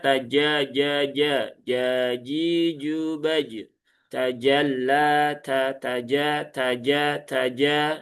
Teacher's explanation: Jadi agak bukan tengah lidah lagi. Padahal kalau kita belajar tempat keluar huruf jim itu tengah lidah, langit-langit atas. Nah, sehingga kalau berbunyi ja itu bisa dirasakan dia tidak di tengah lidah langit-langit atas ya. · Kalau tak itu punya hamas, kalau jim dia enggak punya hamas.